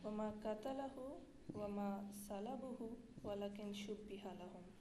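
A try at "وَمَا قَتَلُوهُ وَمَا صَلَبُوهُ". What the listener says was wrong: وما قتلو ہو تم غلط پڑھ رہی ہو نا. قتل لہو پہلے پڑھا تھا تم نے. یہ ہے وما قتلو ہو وما صلبو ہو. ہاں تو قتل لہو پہلے کر دیا تم نے، پھر قتل لہو پڑھ دیا.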